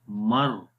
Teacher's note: میم کو ڈائریکٹ را کے ساتھ ملائیں گے تو آواز آئے گی مر، نون نہیں پڑھتے۔ تو یہ بیسیکلی ادغام ہے۔